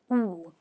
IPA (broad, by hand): uː